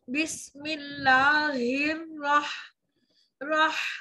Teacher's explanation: हा की सिफत में हम्स मौजूद, रह सांस जारी आवाज को रोक कर।